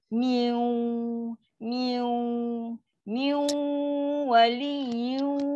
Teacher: 50% bunyi nun, 50% lagi bunyi waw. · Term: idgham naqis